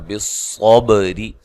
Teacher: با پہ قلقلہ کرنا ہے